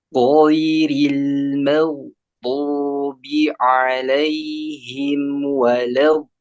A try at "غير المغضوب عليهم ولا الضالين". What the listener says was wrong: 6, baru baru 4 itu. kalau hitungan Anda baru 4 itu.